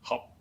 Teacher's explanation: it is pronounced as hop, an entering tone